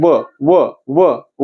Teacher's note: दात लागते ओठावरती लागते म्हणजे दाताने ओठाचा वापर होतो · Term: दंतष्टी वर्ण, दंत्योष्टी वर्ण